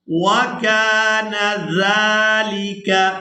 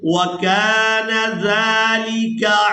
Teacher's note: زال کو ہمیشہ ہی نرمی کے ساتھ ادا کرتے ہیں. زال کو جب ہم نے ادا کرنا ہے تو سیدھی کی مثل آواز پیدا نہیں ہونی چاہیے